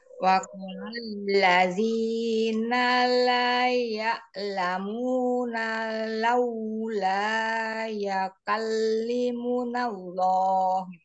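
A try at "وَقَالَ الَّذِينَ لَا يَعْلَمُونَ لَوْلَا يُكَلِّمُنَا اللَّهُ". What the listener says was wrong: Bukan ya ka, yu. Yukallimunallah. Ain tidak hanya ya, ya itu hamzah, tapi ya. Ya. La ya'lamuna laula yukallimunallah.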